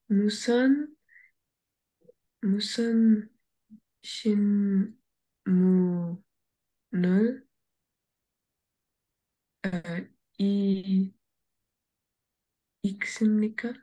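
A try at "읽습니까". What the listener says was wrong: Yes, you read it correctly.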